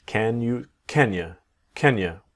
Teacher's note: can you will sound like Kya